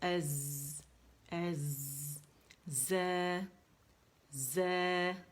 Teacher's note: اس میں buzzing sound ہے, clear نہیں ہوتی